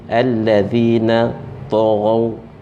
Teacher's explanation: huruf dzal ni dia nipis dan dia berada di hujung lidah, hujung gigi